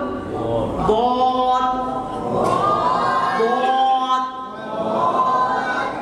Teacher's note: এই আমাদের জিহ্বাটা আছে না, জিহ্বার গোড়ার কিনারা এবং উপরের মাড়ি দাঁতের গোড়ার সঙ্গে, এই যে জিহ্বার আমাদের দুই সাইডটা আছে, এবং উপরের দাঁতের গোড়ার সঙ্গে উপরের মাড়ির সাথে উচ্চারণ হবে। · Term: দতের মাখরাজ